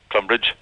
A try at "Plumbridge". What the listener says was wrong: No. Plum Bridge. Plum Bridge. Now, see, the accent, you can't wait to get to the bridge. So the plum is very quick. Plum Bridge.